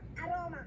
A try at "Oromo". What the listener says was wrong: Oromo. Oromo with the O at the end. O at the beginning O and then at the end O. Oromo.